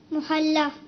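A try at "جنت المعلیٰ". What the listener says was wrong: محلہ نہیں، آپ کچھ کا کچھ کر دیں گے اور کر رہے ہیں. صحیح ہے، یہ نہیں ہے، محلہ نہیں ہے. عین لام جنت المعلا.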